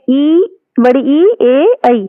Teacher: जिन स्वरों के उच्चारण में जीभ का अग्र भाग यानी कि जो जीभ है उसका जो आगे का भाग है वो प्रयोग में आता है, उसे अग्र स्वर कहते हैं